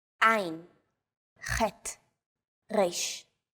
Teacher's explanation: 3 of these letters are pronounced deep in the throat. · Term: guttural letters